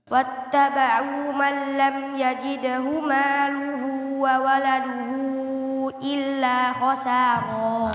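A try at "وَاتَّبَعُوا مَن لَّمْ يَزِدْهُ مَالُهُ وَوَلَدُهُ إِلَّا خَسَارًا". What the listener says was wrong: Nah, cuman bukan man lam yajidhu tapi lam yazidhu, zai bukan jim. Ya, nanti beda artinya. Kalau yajid itu mendapatkan, yazid itu menambahkan. Jadi beda. Hazai, tadi bacanya jim.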